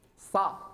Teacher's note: حاولت أن تفخم الصاد لأنها حرف مستعلي ومطبق، فقعرت فمك صا، لا صا، فتح الفم صا مش الصا، صا لا، هذا خطأ.